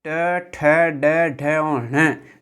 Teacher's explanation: ट ठ ड ढ और ण, साथ ही र और श का उच्चारण स्थान मूर्धा होता है